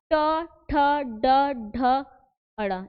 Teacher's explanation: जिन वर्णों को उच्चारित करते समय हमारा जीभ जो है हल्का मुड़े, वे क्या कहलाते हैं? मूर्धन्य कहलाते हैं। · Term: मूर्धन्य ध्वनियाँ